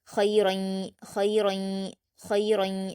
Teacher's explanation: را پر تنوین ہے اور را کی تنوین کے بعد یا آیا ہے تو یہاں بھی ادغام یرملون کا قاعدہ ہے اور یہاں پر غنہ کے ساتھ پڑھا جائے گا